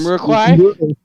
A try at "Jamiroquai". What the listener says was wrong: Very close. It's Jamiroquai. You're forgetting it. You dropped a syllable.